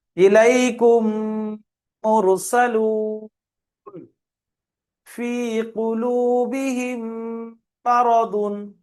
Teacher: মিমকে মিমের সঙ্গে মিলিয়ে একালি পরিমাণ গণনা করে পড়তে হবে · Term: ইদগামে স্বাভাবিক